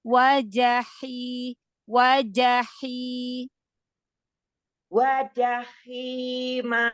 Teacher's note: Haknya tambahkan lagi hamas rohwahnya. Biar dia enggak kayak hamzah wajaima.